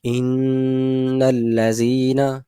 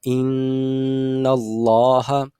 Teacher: نون کے اوپر آواز جو ہے وہ غنے کی حالت کے اندر پراپر طریقے سے ناک میں گنگناتی ہے، ٹھیک ہے؟ تو اس کو کہا جاتا ہے غنہ۔